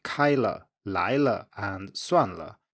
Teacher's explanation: the neutral tone is slightly lower than the preceding tone, except when it's a low tone that comes before it, because then it's a high tone, such as in 好了, the l here is high, whereas in cases like 开了, 来了, and 算了, it is as low or lower than the end of the preceding tone.